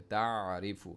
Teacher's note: آئین middle throat میں آواز گوم کر نکلے